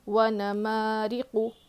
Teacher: پڑھیں گے اور جلدی پڑھیں گے، قاف پہ دو پیش ہے، قاف پر پیش ہے، حرکت میں سے ہے، اس کو کھینچ کر نہیں پڑھنا ہے، جلدی پڑھنا ہے، اور قاف کو موٹا پڑھیں گے